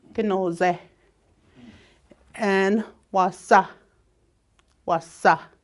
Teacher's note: And then wasa would be like essay. So if your S is by itself without the H, it kind of makes the Z sound in your nasal.